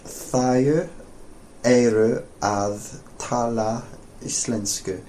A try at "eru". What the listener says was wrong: When you say eru, you're tending to say eiru. Okay, and it's just eru. Eru. So there's quite a big difference in Icelandic between and a.